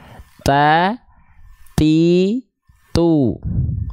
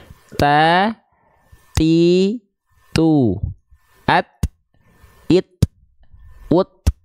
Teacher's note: huruf ta memiliki sifat namanya adalah hams tapi hams di sini bukan mengalir nafas Hanya berupa perecikan nafas saja maka ketika kita melafalkan huruf ta Tidak berlebihan taa th tuu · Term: percikan nafas